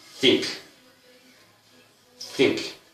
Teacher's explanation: We have the interdental that sounds think, think.